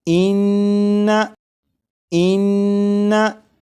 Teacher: नून मुशद्दद की अदायगी के वक्त ज़बान तालु से लगेगी